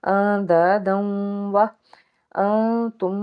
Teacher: دال کے اوپر تنوین ہے یعنی کہ ادغام کا قاعدہ ادا ہوگا · اخفا ہوگا انتم کیونکہ نون ساکن کے بعد تا ہے